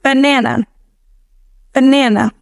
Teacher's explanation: The schwa is present in that last A.